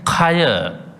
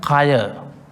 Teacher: They are the letters of the aspirates. That's called the Mahaprana. We have to pronounce as H sound.